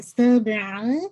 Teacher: سین میں whistling sound بھی، اور با پہ آپ نے قلقلہ کرنا ہے